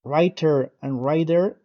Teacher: In American English, T and D both have a very light voice pronunciation between vowels. So, writer and rider would sound the same, like rider.